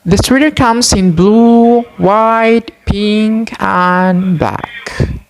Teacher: intonation falls on the last item to show that the list mentioned is finished. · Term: combining intonations in list